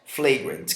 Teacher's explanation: olha só que esse A é um schwa, é bem fraquinho